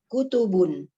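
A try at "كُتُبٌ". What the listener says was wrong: aywa, kutubun.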